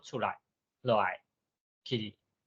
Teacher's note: 头前讲固定格调，像讲出来、落来、去，这声音拢是较低的声音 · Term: 轻声